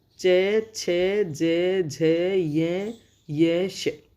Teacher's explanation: हमारी जिह्वा उठकर तालु को टच करती है, तालु को छूती है। और ई बोलते हैं तब तालु को टच करने का प्रयास करती है। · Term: तालव्य